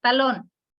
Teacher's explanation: Talón tiene dos sílabas, la sílaba tónica está en la última, que es lón.